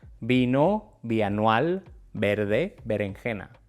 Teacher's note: En español, la v y la b son prácticamente idénticas.